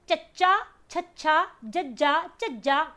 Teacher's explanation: ਆਪਣਾ ਜਿਹੜਾ ਉੱਪਰ ਵਾਲਾ ਤਾਲੂ ਹੈ ਹਨਾ, ਇਹਦੇ ਨਾਲ ਆਪਣੀ ਜੀਭ ਲੱਗ ਰਹੀ ਹੈ ਪਿੱਛੇ, ਤੇ ਉੱਥੇ ਜਾ ਕੇ ਆਪਣਾ ਸਾਹ ਥੋੜੀ ਦੇਰ ਰੁਕ ਵੀ ਰਿਹਾ ਹੈ ਨਾ। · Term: ਤਾਲਵੀ ਵਿਅੰਜਨ